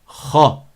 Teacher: elle a une voyelle fatha qui est grave et qui n'est pas aiguë